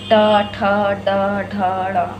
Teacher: और मूर्धन्य जो होता है, तो मूर्धन्य होता है ये है टा वर्ग, ट। अब तो हमारी जीभ और तालु दोनों स्पर्श करते हुए जब निकलते हैं ये, तो ये मूर्धन्य कहलाते हैं